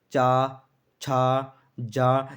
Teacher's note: हमारी जो जीभ होती है वो हमारे तालू से टच होगी